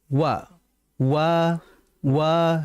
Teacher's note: Ingat huruf yang dia itu selalu dibaca monyong mau dia kondisi fathah atau kasrah itu adalah huruf wau. Wa wa wa wa dia dibaca monyong.